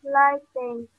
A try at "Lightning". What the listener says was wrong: Lightning. Bukan lighting lo ya. Lightning.